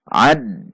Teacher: Ad, perhatikan makhraj dan sifat huruf ain, tidak dibaca a namun a. Ad, ada hentakan ke huruf dal yang menandakan ada tasydid